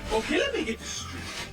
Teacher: instead of saying let me, he reduces it to lemme. Then, as often happens when a word ending in T is followed by a word ending with TH, we drop the T in get and connect it to this.